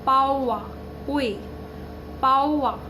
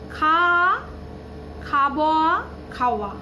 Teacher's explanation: এই দুটো স্বরধ্বনি পরপর যে উচ্চারণ হবে তার মাঝখানে একটা ব্যঞ্জনের উচ্চারণ চলে আসছে ব। সেটা ব্যঞ্জন বললে ভুল হবে, এখানে একটা ও, পাওয়া। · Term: বশ্রুতি